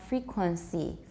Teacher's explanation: Taiwan English will often have frequency. No N. Just a nasalized vowel.